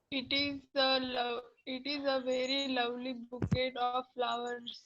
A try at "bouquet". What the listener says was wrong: It is not bouquet. It is bouquet. T is silent there.